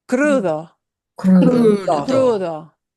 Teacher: you'll notice that D sounds like a TH